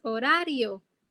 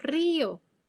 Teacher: Sin embargo, en río no fluye. La I se pronuncia separada de la O. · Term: hiato